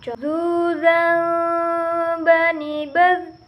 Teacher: Suara mengalir dengan lembut tanpa diiringi dengan udara.